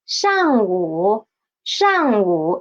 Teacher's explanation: pay attention this 午 should be a half third tone